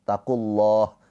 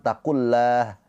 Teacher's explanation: Nah, terus dari sini lafaz Allah dibaca dengan tafkhim tebal karena sebelum lafaz Allahnya berharakatnya dhammah. Ketika lafaz Allah harakat sebelumnya dhammah atau fathah dibaca tafkhim tebal pakai o.